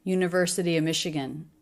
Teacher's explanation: You can just make it a schwa. We reduce the word of to just the schwa a lot.